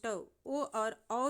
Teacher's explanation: ओ और औ जो हैं यह कंठ और ओष्ठ से उच्चारित होते हैं।